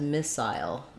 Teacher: pronounce missile as missile with an eye diphthong so like the word aisle missile both are correct missile defense